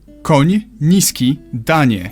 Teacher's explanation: You start with an N and soften it to ni.